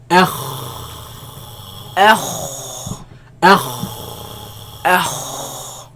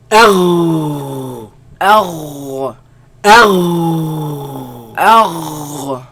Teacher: They come from the top part of the throat, right? Where the root of the tongue raises against the uvula and produce the sound.